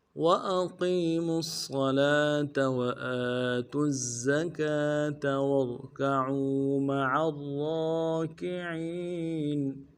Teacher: وَأَقِيمُوا واو کو نرم سے ادا کرنا ہے، حمزہ کو بھی نرم سے ادا کریں گے، قوف کو یا کے ساتھ ملانا ہے، قوف کو موٹا کریں گے، یا مدہ ہے ایک اندار میں کھینچیں گے۔